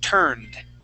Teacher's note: Here we are going to only pronounce a D ending.